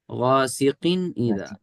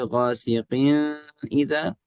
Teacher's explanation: ہم نون کو ظاہر کر کے پڑھتے ہیں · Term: اظہار